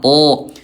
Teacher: kalau to enggak ada udara dan dia tebal diangkat pangkal lidahnya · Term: huruf to